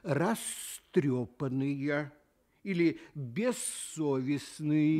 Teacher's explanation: Звук «з» в любой приставке, как только оказывается по соседству с глухим звуком, сам начинает звучать глухо и превращается в звук «с». Получается, глухой сосед его оглушает.